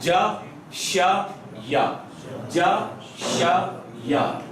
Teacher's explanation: زبان کا سینٹر اوپر ہی لگ رہا ہے لیکن جیم میں بہت زیادہ، شین میں تھوڑا سا کم، اور یا میں بالکل معمولی سا چھو کے گزرے گا